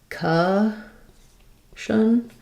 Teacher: That means the letter C-O-N. Sometimes in words they say con if they're stressed, but here as they're unstressed, they're going to sound more like kun. You're going to have a vowel schwa.